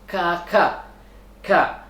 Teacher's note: Bunyinya keluar dari pangkal lidah dekat dengan kerongkongan yang dihipitkan ke langit mulut bagian belakang. 2, di sini pangkal lidah bagian tengah dan langit ini yaitu hurufnya kaf